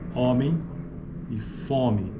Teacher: Em certas variantes Paulistas algumas formas como homem e fome são pronunciadas com vogais orais